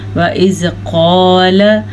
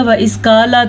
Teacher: حروف مستعلیہ وہ حروف ہیں جو پر پڑھے جاتے ہیں، تو اس لیے ہم قاف کو پر کر کے پڑھیں گے۔ وَإِذْ قَالَ، اگر کوئی اس کو پڑھے گا وَإِذْ قَالَ تو اس نے باریک قاف پڑھ دیا، تو اس نے تحقیق غلطی کی۔ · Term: موٹے قاف